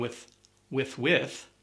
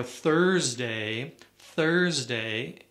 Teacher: there's no vibration sound there's just air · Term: second th sound